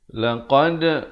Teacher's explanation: Laqad dal itu diberikan pantulan qalqalah sughra di sini